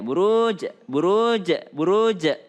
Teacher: Ingat huruf jim itu tidak berdesis. Jangan sampai berdesis ya. Jangan sampai berdesis.